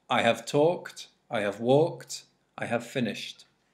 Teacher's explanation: No, we don't pronounce this E, so we say kt. Instead of not talked, but talked. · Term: T sound